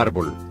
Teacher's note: lleva la mayor fuerza de voz en la penúltima sílaba